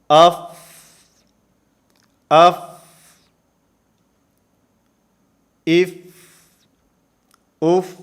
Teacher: صفت ہمس ادا ہو رہی ہے، سانس اس کے اندر جاری رہے گا۔